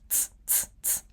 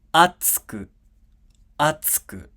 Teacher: this tsu is unvoiced, which means that it does not have a vowel sound. Okay, it just has the consonant sound ts, ts, ts, ts.